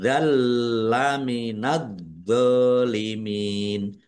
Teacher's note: Idalam minadzolimin fatkah tanwin bertemu dengan huruf lam. Bacaan idghum bila ghunah masuk dengan tidak mendengung. langsung masuk ke huruf lam. · alif lam kom samsiyah, karena tidak dibaca, langsung masuk ke huruf berikutnya, yaitu dha, ditandai dha-nya ada tasdidnya, dha-nya dibaca double. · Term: idgham bila gunnah